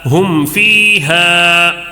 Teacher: میم ساکن کا اظہار شفوی ہوگا. کیسے پڑھیں گے؟ جلدی پڑھیں گے، غنہ نہیں کریں گے